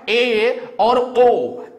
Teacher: जैसे आपका है ए और ओ, इन दोनों को जब आप बोलेंगे तो जीभ आपकी ई उ बोलने से थोड़ा सा कम उठती है, इसीलिए इनको हम अर्ध समृत स्वर के अंतर्गत रखते हैं।